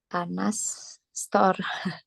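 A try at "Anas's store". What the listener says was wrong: Ya, jadi kalau Anas kan belakangnya pakai S kan. Jadi bacanya gini ya, tulisannya gini. Cara bacanya Anases Store.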